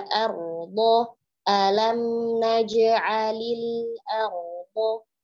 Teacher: Kemudian do, huruf do juga tebal. Tekanannya ada pada sisi lidah kita sebelah kanan atau sebelah kiri bertemu dengan geraham atas